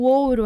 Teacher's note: o ar sai apenas pela boca veia ela pela boca certo o ouro aqui também vogal + semivogal é um ditongo decrescente oral